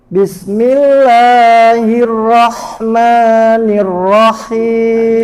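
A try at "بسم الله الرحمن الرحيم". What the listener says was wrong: Jangan terlalu panjangkan mad tabi'i, bukan bismillahi. Bismillahirrahmanirrahim.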